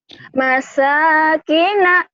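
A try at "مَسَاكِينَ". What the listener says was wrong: Bukan, kayaknya panjang.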